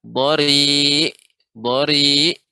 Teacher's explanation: ain ini harus adanya bainiyah, ya. Adanya aliran udara walaupun tidak banyak, ya, dia di antara rakhawah dengan syiddah.